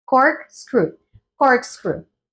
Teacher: debemos Elevar la entonación en la primer sílaba